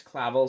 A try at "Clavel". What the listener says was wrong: Clavel? You're saying it like clavicle.